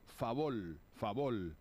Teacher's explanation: confusión entre r y L finales de sílaba